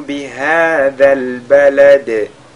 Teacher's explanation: بهذا البلد, le dal de la fin est lu également avec al-qalqala